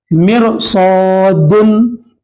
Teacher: मिरसादुन में सौद आ गया, रा को मोटा पढ़ेंगे